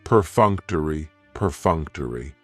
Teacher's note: Perfunctory has 4 syllables, and the stress is on that second syllable, that funk.